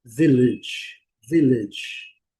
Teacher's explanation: Village, mas no inglês a pronúncia é vele. Primeira sílaba é bem forte e as e a última sílaba é bem fraquinha.